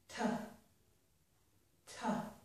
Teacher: So I'm using my tongue to block the air momentarily. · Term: t sound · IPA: / t /